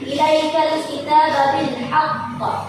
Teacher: Terdapat alif lam qamariyah, dibaca alif lamnya jelas